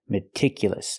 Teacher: The second syllable is pronounced meticulous. Use the short I sound like this is. Remember, it's more open.